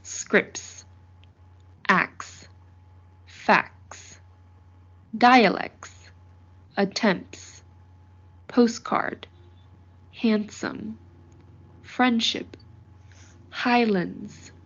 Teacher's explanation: whenever t or d comes between two consonants at the end of a syllable it gets elided which means that it doesn't get pronounced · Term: T and D elision